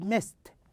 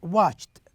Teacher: the d is pronounced as t